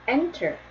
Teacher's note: 찾아보면 enter 앞에 강세가 있어요